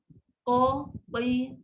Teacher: mulut kita tak perlu bulat pun tak ada. Buka saja, pangkal dia dah naik. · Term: qaf